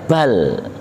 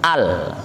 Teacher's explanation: lam sukunya itu ya lam saja, jangan sampai ada le